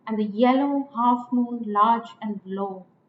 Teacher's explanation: the are unstressed there if you like the start is stressed so two unstressed followed by a stressed that is anapest